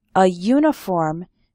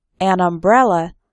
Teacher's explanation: uniform starts with a y sound, but an umbrella because umbrella starts with an a sound, a vowel sound